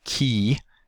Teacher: before a front vowel like in key the tongue will be in the forward position